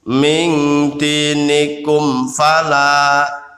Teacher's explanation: Ini ada mim sukun bertemu fa. Ini hukum bacaannya adalah idhar safawi, cukup mengatupkan kum